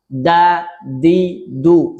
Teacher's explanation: lisan dikeluarkan saat mengucapkannya atau terkesan menggigit ujung lisan. Da di du salah.